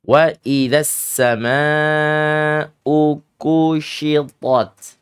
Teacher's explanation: Ada mat tabi'i atau mat asli bertemu dengan hamzah qat'i. Maka di situ disebut dengan mat wajib muttasil. Adik-adik silakan panjangkan sepanjang 4 sampai dengan 5 harakat.